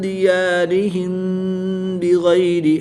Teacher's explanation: میم ساکن کے بعد حرف با ہے تو یہاں پر اخفاء شفوی ہوگا، یعنی غنہ زمانی کر کے پڑھیں گے